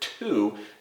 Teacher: when we say the word to the tip of our tongue starts right behind our top teeth